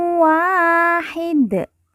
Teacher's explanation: terdapat Alif yang merupakan tanda baca panjang dua harakat miw Wahid Dal di ujung kita sukunkan atau kita matikan karena wakaf atau berhenti